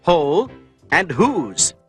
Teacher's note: in a few words the W is silent and only the sound of the H is heard like in the words whole and whose these are exceptions to